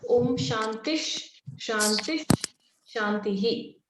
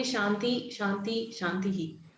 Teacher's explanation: whenever this Visarga is followed by Sha, it takes on the pronunciation of half Sha. So it becomes Shantish.